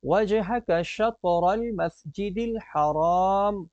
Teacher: خرجتا، خرجتا کی جو را ہے اس کو ہم موٹا پڑھیں گے، تو وَمِنْ حَيْثُ خَرَجْتَ، آگے آئیے، فَوَلِّ وَجْهَكَ، وجہک کی جیم میں ہم قلقلہ کریں گے، وجہک شطر المسجد الحرام، تو شطر کی طا میں بھی قلقلہ کیا جائے گا، اور را کو ہم موٹا پڑھیں گے